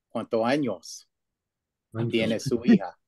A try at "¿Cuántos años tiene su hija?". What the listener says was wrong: You're saying cuánto.